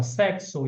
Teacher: o X tem um som de cs